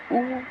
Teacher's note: पहला संवृत स्वर, जो मुंह लगभग बंद रहता है। संवृत स्वर बोलने के टाइम मुंह हल्का सा बंद रहता है